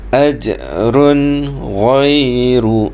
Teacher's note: Bila tanwin bertemu dengan gha, maka dia jadi izhar halqi. Tidak perlu dengung.